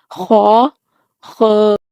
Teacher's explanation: خا حلق کے اوپر والے حصہ سے ادا ہوتا ہے۔ گلے میں جس جگہ پر ہمیں خراش ہوتی ہے اس جگہ سے خا ادا ہوتا ہے۔